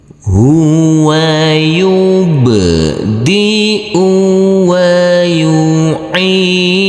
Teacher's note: Huruf ain di sini harus kita baca panjang dengan panjang 2 harokat, karena huruf ain ini huruf ain yang berkasroh i bertemu dengan huruf ya sukun.